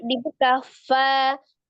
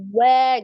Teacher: Kalau wau itu dia walaupun dia fathah disempurnakan dengan memajukan kedua bibirnya ya. Tapi kalau fa dibuka fa kalau wa wa gitu dimaju dulu.